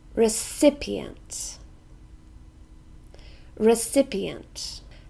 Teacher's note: it has four syllables we stress the second one